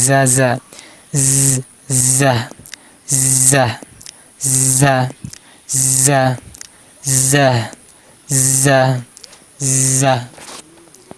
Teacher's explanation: জা হরফের মাখরাজ জিহ্বার আগা নিচে দুই দাঁতের আগার সাথে লেগে উচ্চারণ করতে হবে। যা একটা শব্দ করতে হবে।